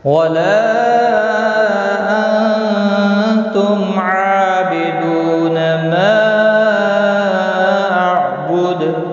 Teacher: دال ساکن پڑھا جائے گا وقف کی صورت میں، اس پر قلقلہ بھی ہوگا